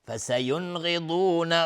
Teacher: فسینغضون، نون ساکن برش غین اظهار حلقی. فسینغضون، غین و ضاد هر دو از حروف استعلاء غلیظ تلفظ میشه